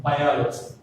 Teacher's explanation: From the ending, O is the 3rd syllable. So stress falls on the O.